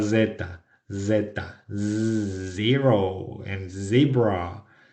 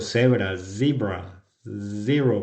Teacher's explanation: pronunciar la Z bien, como el sonido, como el zumbido de los zancudos y de los moscos